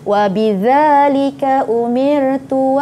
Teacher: bukan lidah ke bawah, tapi hujung lidah bertemu dengan hujung gigi kacip, gigi arnab kat depan tu.